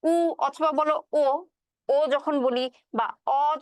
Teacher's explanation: উ ধ্বনি, উ অথবা বলো ও, ও যখন বলি বা অ যখন বলি, সব ক্ষেত্রেই কিন্তু আমাদের ঠোঁটটা কিছুটা গোল হয়ে যায়। এই জন্য এই ধ্বনিগুলো যে আছে এগুলো হচ্ছে গোলাকৃত ধ্বনি।